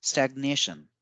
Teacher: in stagnation, we give more stress on the second A